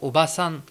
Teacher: Attention aussi à ne pas rallonger le A dans obasan